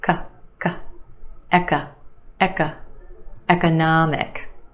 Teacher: And we have a schwah in the second syllable.